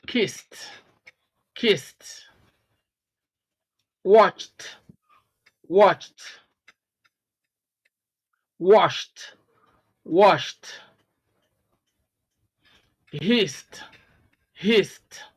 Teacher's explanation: the ed ending in these verbs is pronounced as t because they end in an unvoiced sound